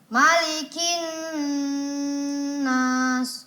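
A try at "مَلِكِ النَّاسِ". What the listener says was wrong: Iya, nas dilamakan lagi 4 harakat. Sekali lagi. Malikin nas.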